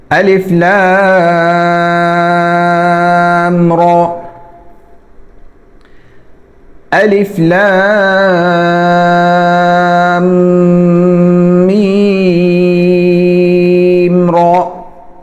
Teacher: اور را عربی میں جب اس پر زبر ہو، کھڑی زبر بھی زبر کی طرح ہی ہے، تو اس کو موٹا پڑھا جاتا ہے، تو یہاں پر را کو موٹا بھی پڑھنا ہے اور کھینچنا بھی نہیں